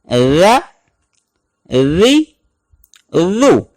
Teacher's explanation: ہلکی سی باہر نکالیں گے اوپر والے دانتوں کے ساتھ ٹچ کرتے ہوئے تو ذ ادا ہوگا، اور اگر آپ زبان دانتوں سے پیچھے رکھیں گے تو پھر یہ ذال کے بجائے ز ادا ہوگا، سختی والا۔